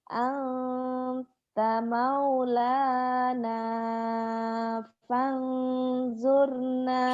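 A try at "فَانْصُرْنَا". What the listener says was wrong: Sod. Fansurna. Iya, ihfa. ketemu sod kan ihfa. Fansurna. Tadi sodnya tadi kurang ini, kurang nyut. Fansurna. Sod. Fansurna.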